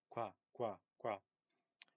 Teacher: you can't separate the k from the w because they aren't two separate sounds. It's just one qua sound.